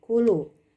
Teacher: Kaf dengan lam, kaf ada di aqsal lisan dan lam ada di hafatul lisan